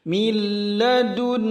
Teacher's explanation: Balawta min ladun, mil itu idgham bila gunnah, lamnya tidak digunnahkan, tidak ditahan lama. Min ladun, nun tasydid itu gunnah ditahan lama